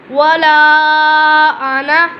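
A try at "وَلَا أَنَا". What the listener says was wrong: ये ज़ाइद अलिफ है, हम इसको अना नहीं कहेंगे। वला अना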